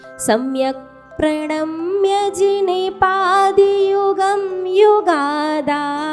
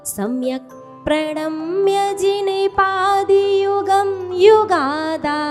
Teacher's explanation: सम्यक तो ह्रस्व शुरू करो और आगे बढ़ते बढ़ते स्वर को दीर्घ, वॉल्यूम दीर्घ नहीं करना, स्वर को। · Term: थोड़ी दीर्घ